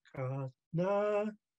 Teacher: it's a loaded K from the back of the throat and then the n g AA is very nasal no or